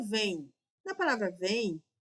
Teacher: o M vai ser semivogal porque tem som de I